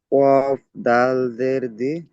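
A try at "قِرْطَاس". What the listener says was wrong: দাল নয়, র। কফ রজের কির, কির। ত হামজা নয়, ত আলিফ সিন, ত আলিফ সিন জাবার, তস, কির তস। ত এর উপরে জাবার, তারপরে আলিফ, তারপরে সিনের উপরে সাকিন। তাহলে ত আলিফ সিন জাবার, তস, কির তস।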